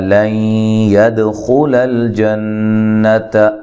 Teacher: لن یہاں نون ساکن کا ادغام مع الغنہ ہے